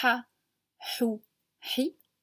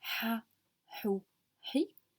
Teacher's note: ça vient de la gorge